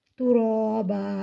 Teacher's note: الف سے پہلے زبر ہے، الف مدہ، الف مدہ کو ایک الف کے برابر کھینچ کر پڑھیں گے